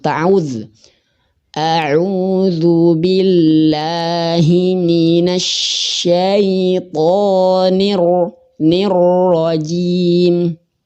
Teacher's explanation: jadi seperti temen-temen getarannya dua kali yakni tidak boleh kebanyakan